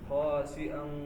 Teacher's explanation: تو حمزہ کا پھر تحقیق پوری واضح ہونی چاہیے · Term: حمزہ کی تحقیق